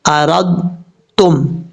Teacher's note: وَإِنْ أَرَدْتُمْ أَن تَسْتَرْضِعُوا، واو زبر وا، حمزہ نون زیر ان، وَإِنْ حمزہ زبر آ، را تا زبر رات، تا میم پیش تم، وَإِنْ أَرَدْتُمْ، یہاں پر پڑھتے ہوئے پہلے آپ نے ایسے پڑھنا ہے کہ ایسے محسوس ہو کہ پہلے دال پڑھا جا رہا ہے، دال کی کچھ صفات پڑھیں گے، پھر تا